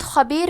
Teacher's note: خا کی ادائیگی حلق کے اوپر والے حصے سے ہے، خا حروف تفخیم میں سے ہے تو ہم یہ حرف کو موٹی آواز میں پڑھیں گے۔